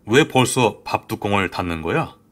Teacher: 디귿과 니은이 만났더니 뒤에 있는 비음인 니은 때문에 비음이 아니었던 디귿이 비음인 니은으로 변화해서 발음되고 있고요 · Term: 비음화